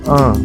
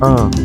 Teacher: it has a nasal sound at the end